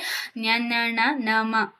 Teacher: ಮೂಗಿನ ಸಹಾಯದಿಂದ ಉಚ್ಚರಿಸುವಂತಹ ಅಕ್ಷರಗಳನ್ನ ಅನುನಾಸಿಕ ಅಕ್ಷರಗಳು ಅಂತ ಕರೀತಾರೆ